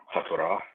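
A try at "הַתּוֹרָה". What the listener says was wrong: HaTorah, good.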